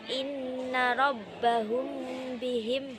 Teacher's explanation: Contohnya Adapun cara membacanya adalah bunyi mem sukun dibaca samar-samar di bibir dan berdengung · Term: ikhfa syafawi